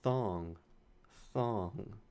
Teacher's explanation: I hear a theta at the beginning, thong, the voiceless interdental fricative